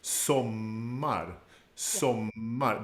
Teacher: the stress is on the first syllable, but the O is short. We have a double M that becomes part of that strong part of the word, sommar.